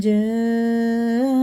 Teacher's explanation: یہ مد متصل ہے، 4 الف کے برابر کھینچ کے پڑھیں گے